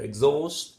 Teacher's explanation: the stress is on the second, you see primary stress on the second syllable